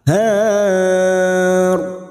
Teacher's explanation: Ro ini kita baca tafkim karena sebelumnya ada harokat fathah.